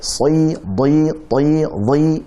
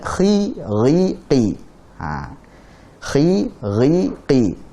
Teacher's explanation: Kita akan rasakan bahwasanya si, di, ti, di lebih tebal daripada khi, ri, qi. Kenapa? Karena si, di, ti, di itu memiliki sifat itbaq.